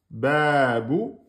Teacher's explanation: On a bien là le ba avec le deux temps. On a bien le bou, un temps.